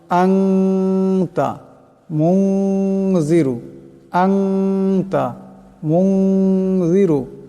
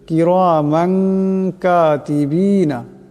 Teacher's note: আসে তবে সেই তনবিন ও নুন সাকিনকে ইকফা করিয়া পড়তে হবে ইকফার গুন্নাকে এক আলিফ পরিমাণ লম্বা করে পড়তে হবে